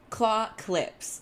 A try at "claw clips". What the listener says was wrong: Because whenever you say it, I think you're saying clock lips. Claw clips.